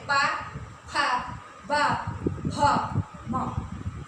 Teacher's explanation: प वर्ग जो है, इनका उच्चारण जब करते हैं वर्णों का तो ओष्ठ से होता है